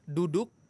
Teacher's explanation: kalau huruf Dal ujung lidah ketemu dengan pangkal gigi seri atas